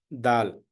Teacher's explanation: this is the tip of the tongue should touch backside of the front teeth, top teeth, where there is a this flesh started here.